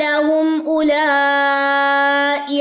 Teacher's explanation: یہاں پہ میں نے اولائی پڑھا ہے، واو یہاں پہ سائلنٹ ہے. ٹھیک ہے، یہ واو جو ہے یہاں پہ نہیں پڑھا جائے گا.